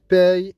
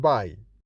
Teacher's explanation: P and B are different in another feature which is called force of articulation. That is, P is produced with more force since it is produced without vibration in the vocal cords.